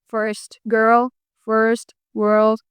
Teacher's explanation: You roll the tongue to make that R sound.